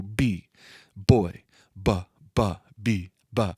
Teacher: no matter what vowel sound we put after it it's attached to it it's a voiced consonant it's using your vocal cords